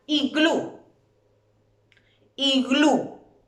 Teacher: La sílaba tónica es glu, y termina en vocal.